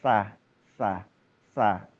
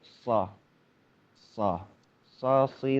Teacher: Huruf tebalnya huruf shad itu adalah bagaimana mengarahkan vokal itu membelok ke atas gitu kan ya. Membelok ke arah langit-langit mulut